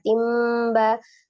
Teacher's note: Jadi nun sukunnya berubah menjadi mim sukun disertai dengan gunnah.